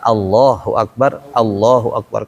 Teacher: Hamzah di fath itu kan bunyi a bukan O.